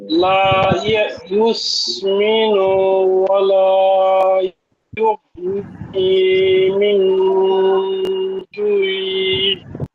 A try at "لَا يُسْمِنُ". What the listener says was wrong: এখানে লা ইউসমিনু, এখানে একটু টানের মতো হয়ে যায়, এটা একটু খেয়াল করতে হবে যে হরকত উচ্চারণ তাড়াতাড়ি হবে, টান যেন না হয়।